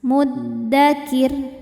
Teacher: Saat berhenti di huruf ro, ro-nya disukunkan dan dibaca secara tarqiq. Kenapa? Karena sebelum ro sukun ada baris kasrah, maka ro-nya tipis.